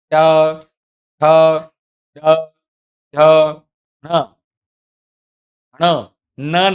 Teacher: તમારી જીભ છે એનો આગળનો ભાગ તમારા જે પેઢા છે એ પેઢાના બિલકુલ કહેવાય છે કે પાછળના ભાગમાં ટચ થશે.